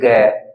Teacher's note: आगे बढ़ जाते हैं तीसरा चौथा पांचवा बोलेंगे तो देखिए ग ऐसी कुछ मोटी सी आवाज होगी यानी कि कुछ कंपन के द्वारा बोलेंगे आपकी आवाज थोड़ी सी वाइब्रेशन मोड में यहां पर निकलती है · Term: सघोष